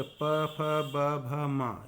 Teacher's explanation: दोनों होंठ मिल जाते हैं जिन वर्णों को बोलने पर, वो होते हैं आपके ओष्ठ